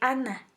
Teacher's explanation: ana está perfectamente ubicada en los alvéolos